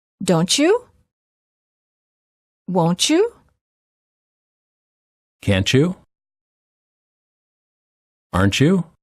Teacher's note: Final T plus Y is usually pronounced as ch, as in church.